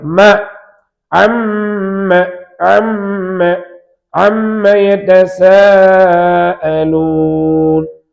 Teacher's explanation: மீம் இரு உதடுகளை இணைக்கும் பொழுது மீம் உண்டாகும். · இன்னொன்று குன்னத்தும் மின் ஹைஷூம், மூக்கந்தண்டு ஒளியும் மீமுக்கு உண்டு. மூக்கை அடைத்துக் கொண்டு மீமை சொல்ல முடியாது. எனவே மீம் என்பது மஹ்ரஜ் பாதி, குன்னா பாதி.